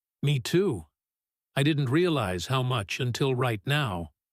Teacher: Notice the small pause she takes before until right now.